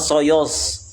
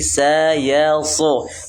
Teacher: Tipiskan sa-nya, demikian juga ya-nya, tebalkan so-nya. Jangan soyos, tapi sayalso, sayals, bukan soyos.